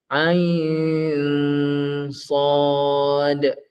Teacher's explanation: Nun mati bertemu dengan sad, dia dah jadi dengung.